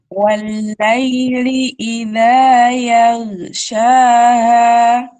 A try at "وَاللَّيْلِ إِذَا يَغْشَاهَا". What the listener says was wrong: Nah, itu harus ditebalkan, huruf O-nya harus ditebalkan. Tadi kan saya bilang harus ditebalkan. Arahkan dia ke fathah. Walaili idza yaghshaha, yaghsha. Ya gitu. Bukan ya, kalau ya jadi tipis nanti.